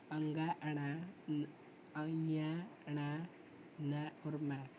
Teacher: जिन वर्णों का उच्चारण नासिक्य से होता है, यानी कि उच्चारण करते हुए हवा नाक और मुंह दोनों से निकलते हैं, उसको कहते हैं नासिक्य वर्ण।